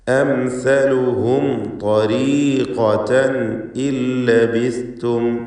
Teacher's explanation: പദത്തിൻ്റെ അന്ത്യത്തിൽ വീണ്ടും സാക്കിനത്തായ മീം ഇൽഹാർ ഷഫവി മണിക്കാതെ വെളിവാക്കുക